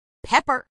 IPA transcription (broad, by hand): ˈpɛpər